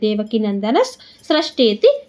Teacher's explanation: ಶೋದ್ಭವೋ ಭಾನುಭ ಮಹಾಪ್ರಾಣ ಭಾನುತಿ ಬೀಜಂ ದೇವಕಿ ನಂದನಸ್ ನ ಆದಮೇಲೆ ವಿಸರ್ಗ ಇದೆ ವಿಸರ್ಗದ ಮುಂದೆ ಸ ಇದೆ ಅದಕ್ಕೆ ಅರ್ಧ ಸ ಆಗುತ್ತೆ · ವಿಸರ್ಗದ ಮುಂದೆ ಸಾ ಇದೆ, ಅದಕ್ಕೆ ಅರ್ಧ ಸಾಗುತ್ತೆ